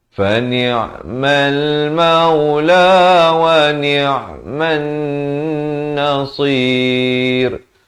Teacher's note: Man di sini didengungkan 2 harakat.